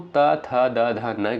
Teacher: आप कहोगे सर दंत से इनका उच्चारण होता है